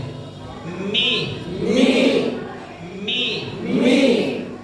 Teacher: মিম দুই ঠোঁটের শুকনো অংশ মিলে